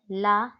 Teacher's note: जिस व्यंजन का उच्चारण करते समय वायु जिव्हा के दोनों बगल से बाहर निकल जाती है वह पार्श्विक व्यंजन होता है।